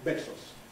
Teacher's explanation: during the actual B in Spanish, there is a voicing indication, even before the release. Then immediately upon release, of course, we have a much bigger movement of the wave, besos.